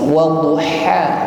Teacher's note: Setelah waddu ada huruf ha, bersih. Huruf ha, bersih, dan ada nafas yang terlepas.